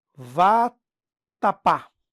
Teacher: É uma oxítona, porque a tônica está na última posição.